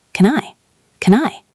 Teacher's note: the N in can moves to the I.